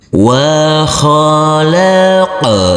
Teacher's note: Huruf nun kita baca panjang dengan panjang 2 harokat, karena di atas huruf nun ini ada huruf alif kecil yang berdiri tegak lurus